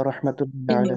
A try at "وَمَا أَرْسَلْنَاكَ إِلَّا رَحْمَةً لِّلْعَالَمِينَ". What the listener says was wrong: रहमतल लिल आलमीन, रहमतुल नहीं, रहमतल, ता पर फता, रहमतल लिल आलमीन।